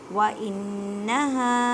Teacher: نون مشدد ہے، گنہ کریں اور ہا کو ایک الف کی مقدار میں کھینچ کر پڑھیں۔